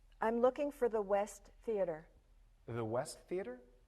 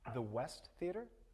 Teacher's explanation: Listen again to the way the voice goes up at the end. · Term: rising intonation